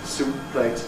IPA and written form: ˈsuːppleɪt (soup plate)